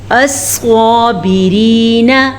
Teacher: را باریک پڑھی جائے گی، را کے نیچے زیر ہے